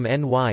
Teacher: the standard word for 'now' nyt has lost its t and become ny in Helsinki speech